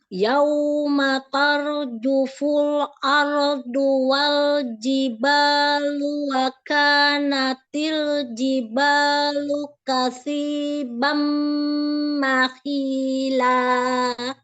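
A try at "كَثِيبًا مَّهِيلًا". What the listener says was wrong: Mim tasydid jangan dinaber. Idgham bi gunnah kan? Jangan dinaber. Kasibam. Bam jangan ya.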